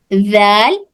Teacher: सिर्फ ऊपर के दांत का किनारा को टच करते हुए जबान थोड़ी सी बाहर निकलकर जाल अदा हो रहा, जाल ज। जबान का किनारा ऊपर के दांतों को टच होकर थोड़ी सी बाहर निकलेगी तो होगा जाल अल्लवीना, ठीक है।